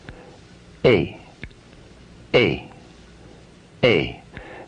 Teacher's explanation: the complex sound a is dynamic it moves from a position behind up to position two where e is located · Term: complex vowel sound